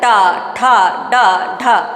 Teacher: जब ट को बोलते हैं तो जीभ क्या होती है पीछे राउंड लेती है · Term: मूर्धा